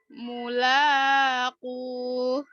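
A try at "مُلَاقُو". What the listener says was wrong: La-nya kepanjangan. Iya, jadi kalau mau dipanjangin banget tuh di sini aja di nya ya. Jangan di mulanya, la-nya nggak boleh 2 harokat soalnya.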